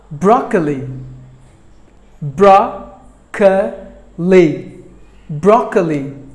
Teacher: three syllables are there in this word but the first syllable gets the stress